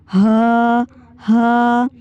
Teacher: आपका जो हलक का निचला हिस्सा है जो सीने की तरफ है वो वाइब्रेट हो रहा है